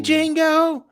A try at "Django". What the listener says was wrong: The D is silent.